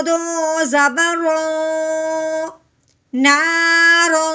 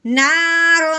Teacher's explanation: ہے تو تا جو ہے حروف ہلکی میں سے نہیں ہے تو اب ہم نے رو پہ غنہ کرنا ہے، لیکن کون سا، اخفا کا